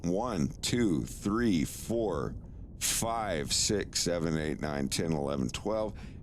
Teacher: if you keep going your lips will never touch each other until you get to 1 million